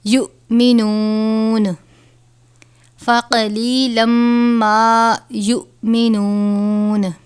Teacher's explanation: ما یؤمنون، حمزہ اور جزم ایک ساتھ ہوں تو حمزہ ساکنہ ہوتا ہے، اور حمزہ ساکنہ ہو تو لفظ کو جھٹکا دے کر پڑھتے ہیں